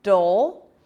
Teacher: it's a light D and then that dark L sound